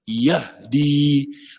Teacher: C'est le H. Ouais, le son sort du fond de la gorge. Yahdi. Parce que si vous ne prononcez pas ça correctement, vous allez confondre avec le Ha.